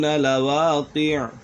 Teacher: یہاں پر وقف کی صورت میں عین ساکن ہو جائے گا، تو اس کے اوپر کسی قسم کی کوئی حرکت نہیں ہوگی، صرف عین ساکن ہو جائے گا۔